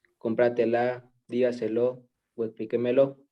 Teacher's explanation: llevan la fuerza de voz a la cuarta sílaba